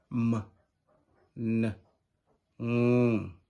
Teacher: Nasals are consonant sounds that are produced by blocking the mouth completely, allowing the air to escape through the nose. These are the 3 nasal sounds, as in m, n, ng.